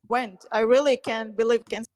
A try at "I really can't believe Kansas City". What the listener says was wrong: Really can't believe you're really rushing your vowel sounds, and what's happening is, as a result, your consonant sounds are very, very heavy on believe. Believe Kansas, like believe is so fast. Believe. So it's a schwa sound followed by an e sound. E. Believe.